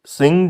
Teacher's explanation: nasalization of vowel under the influence of the nasal consonant after it